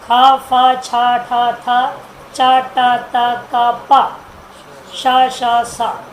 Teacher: विवार होता है, श्वास मुख से निकलने लगता है, और अघोषा गूंज रहित होता है।